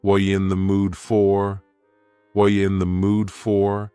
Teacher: the word you has been reduced to yah · What are you in the mood for? The word are is gone, and the word you has been reduced to ya. So when we link together, what and you, super fast.